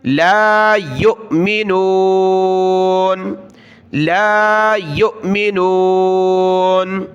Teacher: یا کو حمزہ ساکنہ کے ساتھ ملایا، جھٹکے کے ساتھ پڑھنا ہے اس کو